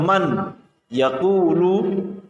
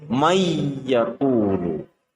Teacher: Tulisannya adalah man, yaqulu, akan tetapi cara membacanya adalah nun harus dimasukkan ke huruf ya dengan cara mendengung. Cara membacanya menjadi may yaqulu. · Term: idgham bi ghunnah